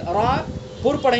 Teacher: را پر پڑھیں گے چونکہ را کے اوپر زبر ہے